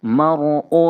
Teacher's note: یہاں پہ را ساکن سے پہلے زبر ہے، اسی لیے را کو موٹا پڑھیں گے، پر کر کے پڑھیں گے